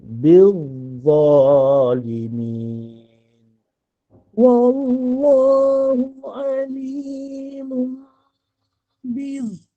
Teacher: hujung lidah kita akan keluar di gigi kecil atas tapi dia tebal